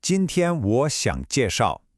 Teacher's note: 今天 is first tone, nice and high.